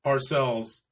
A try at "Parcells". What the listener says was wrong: It's Parcells, pluralized the whole time.